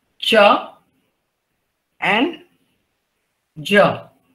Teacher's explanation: Then palatal is cha and ja. Both are unaspirant.